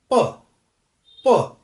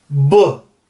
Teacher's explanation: यहां हाथ रखिए, आप बोलिए प। प प बोलने से पहले यहां आपको कोई वाइब्रेशन महसूस नहीं होगी, लेकिन जब आप ब बोलना चाहेंगे, ब, तो पहले ही यहां पर आपको वाइब्रेशन महसूस होगी वोकल कॉर्ड्स के अंदर। तो ये जो वाइब्रेशन है, ये जो वोकल कॉर्ड्स वाइब्रेट करना स्टार्ट कर देते हैं, उनको हम कहते हैं वॉइस्ड।